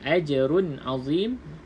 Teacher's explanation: Ain salah satu daripada huruf yang keluar pada halkum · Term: izhar halki